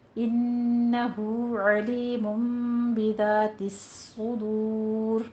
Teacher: انہو غنہ واجبہ ہو میں مد صلہ صغرا کریں گے، الٹا پیش ہے، 2 کاؤنٹ کرنا ہے۔ علیم میں تنوین کے بعد با آ رہا ہے، اقلاب کریں گے